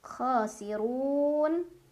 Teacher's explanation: Ro dibaca secara tafkhim karena ro berbaris dan barisnya di atas, jadi bacanya tebal.